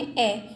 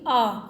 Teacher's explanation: आ में ज़्यादा आवाज़ खींच रही है यानी कि ज़्यादा समय लग रहा है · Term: दीर्घ स्वर